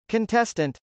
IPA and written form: kəntˈɛstənt (contestant)